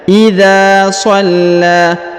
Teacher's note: huruf dha dipanjangkan 2 harokat karena di depannya terdapat alif ya